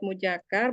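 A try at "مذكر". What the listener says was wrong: Jangan muja, jangan jim, muzaza. Laisa mujakar, muzakkar, za, pakai za umi.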